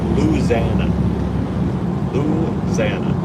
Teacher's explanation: instead of the five syllable Louisiana they just say Lana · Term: southern accent